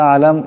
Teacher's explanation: মিম সাকিন কিন্তু গুন্না করা যাবে না